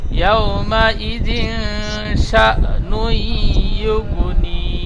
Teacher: ইয়াউমাইযিন শা বলে টান দিয়েছেন, শিন হামজা যাবার শা, হামজার উপরে সাকিন এসেছে, একটু ঝাটকা বা ধাক্কা দিয়ে পড়তে হবে